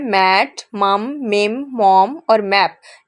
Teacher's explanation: यहाँ पर आप देख सकते हैं आप दोनों होंठों को दबा कर ये आवाज़ निकाल रहे होंगे। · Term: बाय लेबियल नेजल, वॉइस्ड bilabial nasal